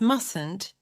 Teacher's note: The pronunciation of must is easy, but in the negative, do not pronounce the first T.